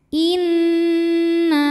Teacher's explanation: cara membacanya dengung bunyi n-nya tahan sampai ada getaran halus ke hidung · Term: ghunah musyaddadah